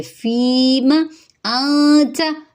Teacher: نون ساکن کے بعد تا ہے تو یہاں اخفا ہوگا، یہاں پہ اخفا باریک ہوگا